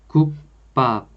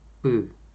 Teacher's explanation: So as you can see, the initial consonant 비읍 the initial consonant 비읍 is coming after 기역. 비읍 itself is pronounced as tensified 비읍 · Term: Tensification